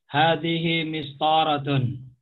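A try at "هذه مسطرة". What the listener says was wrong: Nah.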